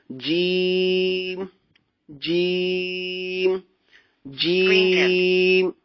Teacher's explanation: جیم نکلتا ہے زبان کا درمیان اور اوپر کا تالو, یعنی تالو کا جو ٹاپ حصہ ہے وہ جو اوپر کی طرف ابھرا ہوتا ہے وہاں سے جیم ادا ہوتا ہے.